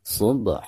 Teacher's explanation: huruf ba-nya kita qalqalahkan, karena ini dihukumi qalqalah sugro ya. Subha. Adapun ketika diwaqafkan, ini juga sama, dihukumi mad iwad.